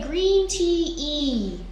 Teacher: so it is high your tongue is high in the front